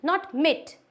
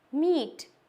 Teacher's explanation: ई की साउंड देगा, long E sound, that is मीट।